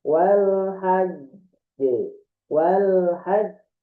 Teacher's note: Huruf qalqalah yang bertasdid ya. Ini adalah huruf qalqalah, huruf bunyi itu bertasdid, maka pantulannya agak telat.